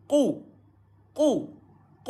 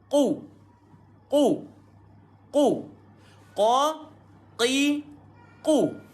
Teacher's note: Lidah tuan-tuan mesti apungkan sebab dia huruf isti'la. Huruf tebal.